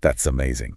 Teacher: Really focusing on the vibration of that Z sound linking the words together.